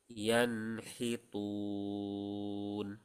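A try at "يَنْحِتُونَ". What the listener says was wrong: Taknya tipiskan. Tun, tun.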